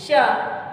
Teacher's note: इसका जब उच्चारण करते हैं तो हमारी जिह्वा जो है तलवा को स्पर्श करती है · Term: तालवी श